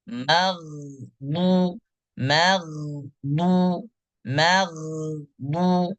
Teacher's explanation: makhraj huruf gain yang keluar dari ujung tenggorokan